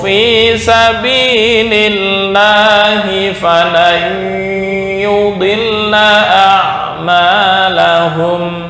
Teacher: ini non mati bertemu ya idgham bi gunnah, maka membacanya masuk ke hidung ya.